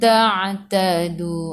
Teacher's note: Ain daripada kerongkong bukan daripada hidung. Tadu 2 harakat ada. · Ikhfa hakiki dengan 2 harakat bawa ke huruf ta. Ta'tadu. Ain daripada kerongkong bukan daripada hidung.